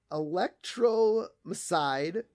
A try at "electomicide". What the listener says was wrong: It's electomicide. There's no R.